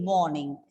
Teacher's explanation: In the word morning, the R is silent, right? Because of the N after that.